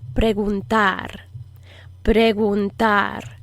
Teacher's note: this is a soft g so it kind of blows air out a little bit in the back of your throat you approximate the back of your tongue to the back of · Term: fricative g